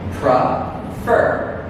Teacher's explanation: The stress is on fur.